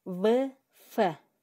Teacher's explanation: Ал эми эринтишчилдер В, Ф. Астыңкы эринибиз, үстүңкү тишибиз кыймыл аракетте болуп атат. Өпкөдөн чыгып келе жаткан аба үн менен шыбыштын катышуусу менен астыңкы эринге жана үстүңкү эринде жасалып жатат бул жерде.